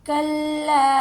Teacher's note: کلا، دیکھیں اس کے ساتھ الف ہے، ایک الف کے برابر ہم اسے کھینچ کر ادا کریں گے